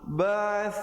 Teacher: Ba'ath lidah keluar, di ujung lidah keluar